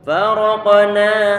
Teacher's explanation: huruf qaf dia tebal, huruf nun dia tipis. Kalau nggak hati-hati, ketebalan yang dimiliki oleh huruf qaf akan dibawa ke huruf nunnya.